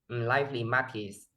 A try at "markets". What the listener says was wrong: Market sounds like Mackey's.